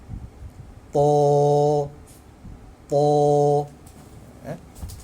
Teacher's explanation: Maka ta itu hendaklah kita baca 2 harakat sahaja. · Dan ta salah satu huruf isti'la yang perlu kita tafkhimkan, kita baca dengan tebal. Tambahan, selepas huruf ta yang berbaris di atas itu terdapat huruf mad alif, maka lebih-lebih lagi kita perlu tafkhimkan dia, tebalkan dia. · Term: mad asli